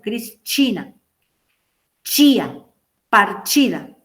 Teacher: La letra T seguida del sonido I va a sonar como esto, como chi